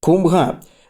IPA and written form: kum.bʱɐ́ (कुम्भ)